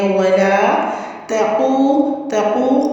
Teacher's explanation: ولا واو پہ ہونٹوں کو راؤنڈ کرنا ہے، لا کی ہمیں 2 کاؤنٹس کرنی ہے۔ ولا تقو، تقو قاف پیش اور واو ساکن ہے تو یہاں پہ ہم نے واو مدہ کرنی ہے 2 کاؤنٹس کے ساتھ